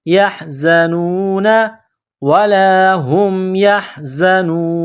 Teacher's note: زا میں سیٹی کی آواز پیدا کرنی ہے